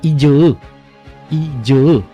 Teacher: Então esse J, esse som, essa africada, né, alvéolo palatal, vozeada, ela é representada com a letra J.